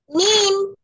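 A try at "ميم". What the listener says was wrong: ওরকম না, মি, জোরে বলেন। আরো টেনে পড়তে হবে, মি।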